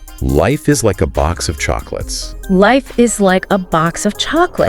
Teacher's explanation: when you engage your chest more, it's creating these fuller vocal cord vibrations. Okay. And allows for better, projection of your voice. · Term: speaking from the chest